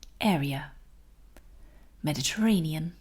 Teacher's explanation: So that means that the part of the word with ea spelling is a little bit weaker